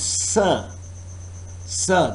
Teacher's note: this is fricative consonant but it needs a narrow channel for the airflow